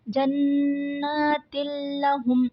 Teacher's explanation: تنوین کے بعد لام آ رہا ہے تو یہاں پر ادغام بلا غنہ ہوگا۔